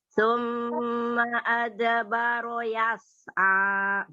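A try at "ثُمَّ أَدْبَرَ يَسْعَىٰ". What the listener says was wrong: Ro-nya tafhim, tebalkan lagi.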